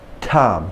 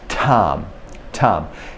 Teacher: Okay, but not many people notice the two parts. You've got the stop, and then you give us the puff of air. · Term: Stop plosive